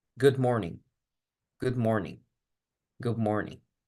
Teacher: Entonces, la D ya no suena. Más bien se convierte como si fuera una B. O podemos totalmente pensar que la D desaparece del sonido. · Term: la asimilación